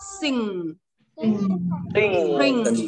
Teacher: Khi mà âm cuối này sụt lưỡi lại hơi ừng một tí